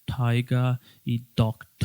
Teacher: el británico no pronuncia esa r y en vez de la r escuchamos un sonido particular del inglés que se llama sha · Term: Non rotic accent